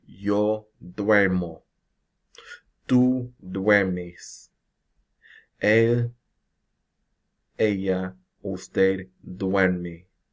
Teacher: So again, this UE will be pronounced as if it's one syllable. And as with the E to IE stem changes, the stem change is going to occur on the next to last syllable of the verb.